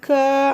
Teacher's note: அப்படி சொல்லும்போது பின்னாக்கு போய் மேல ஒட்டும் ஆனா ஒட்டுனோம்னாக்க உடனே கீழ இறங்கி பிளாட்டா ஆகிரும்